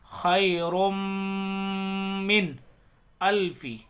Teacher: نون کی آواز صاف آئے گی · نون کو ناک میں آواز، ناک میں چھپا کر نہیں پڑھیں گے، ظاہر کر کے پڑھیں گے، اس کو اظہار بولتے ہیں۔